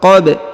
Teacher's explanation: huruf ba dipantulkan ya karena berharokat sukun